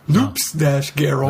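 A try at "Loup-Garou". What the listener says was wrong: No, not loops. There's no S. I mean, there is, but you don't say the S.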